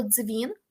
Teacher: ми вже не маємо повноцінного Д чи повноцінного з ми маємо африкат ми маємо злитий ми маємо ДЗ